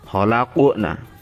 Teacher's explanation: qaf itu juga qalqalah, juga terbaca memantul